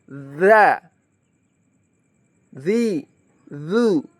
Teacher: Huruf dza ini ujung lidah bertemu gigi seri atas. Kalau tadi bibir, sekarang ujung lidah bertemu dengan gigi seri atas. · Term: huruf dzal